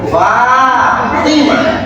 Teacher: Fa-nya juga mau dipanjangkan 2 harokat 1 alif boleh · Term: dua harakat